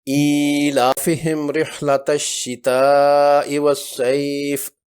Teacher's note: مد بدل کی مقدار 2 حرکات کے برابر ہے